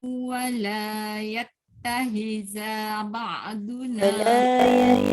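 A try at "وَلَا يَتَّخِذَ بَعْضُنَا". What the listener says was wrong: za pendek. Wala yattakhidha ba'duna. Khi. Khi.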